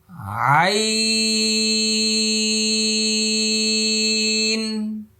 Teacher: দেখেন মুখটা ফাঁকা হয়ে গেছে, শেষে নুন আসছে, এই যে দেখেন নুন আসছে।